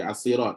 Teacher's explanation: dia tak bunyi lam kan? Dia betul dia masuk dengan sad kan? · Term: Lam syamsiah